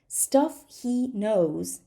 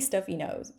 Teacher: So we just drop this H and it's stuff he knows.